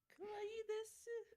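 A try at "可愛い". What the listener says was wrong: You gotta pronounce the second I in kawaii, otherwise it's kawaii, and that means scary. Kawaii! Kawaii desu ne?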